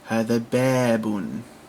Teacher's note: we have an aleph to signify a long vowel, a long eh sound